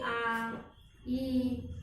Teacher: दीर्घ स्वर, जैसे कि ह्रस्व स्वर से इन्हें बोलने को थोड़ा टाइम लगता है